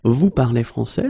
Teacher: We just need to raise the voice at the end.